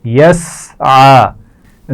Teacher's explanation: سین کی آواز میں سیٹی ہوتی ہے, اس کا خیال رکھیے اور عین کے مخرج کو واضح رکھنا ہے